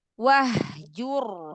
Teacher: Hak yang ini haknya hak besar dari tenggorokan bagian bawah dari pita suara